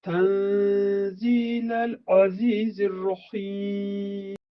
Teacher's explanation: Burada nun hərfi Z hərfi ilə birləşir. Burada ixfa olunur. Biz bacardığımız qədər nun hərfindən sonra gələn 15 hərf ki var, hər birinin məxrəcinə uyğun dilimizi saxlayaraq nun hərfini həmin yerdə ixfa edirik.